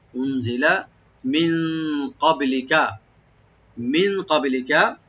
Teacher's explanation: তিন আলিফ টানবেন, এখানে মধ্যে মুনফাসিল, ওয়ামা উনজিলা, হামজাকে রাইট দিবেন, নুন সাকিন এখানে আমরা একালি পরিমাণ আমরা ইখফা করব, লাইট গুন্না , লামে কোনো টান নাই, উনজিলা মিন ক্বাবলিকা, মিন ক্বাবলিকা, মিন